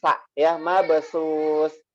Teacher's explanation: Ujung lidah, betul ya. Huruf sa ini ujung lidah. Posisi ujung lidahnya nempel di gigi seri atas.